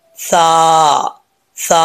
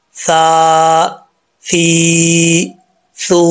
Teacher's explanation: زبان کی نوک اوپر والے دانتوں کے نچلے حصے سے لگے تو سا پڑھا جاتا ہے بغیر سیٹی کے۔ یہ جو تین نقطوں والا یہ جو سا ہے اس سا میں سیٹی نہیں ہوتی، یہ چیز خیال سے سنیے گا۔